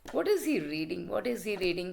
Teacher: When you are not interested, you always speak in a very low voice, you always lower your pitch. · No, see, before that I just raise my pitch. Now I'm lowering my pitch. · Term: falling tone